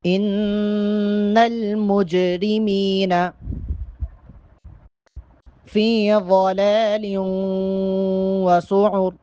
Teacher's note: جیم چونکہ ساکن ہے، جیم پہ کلکلا کریں گے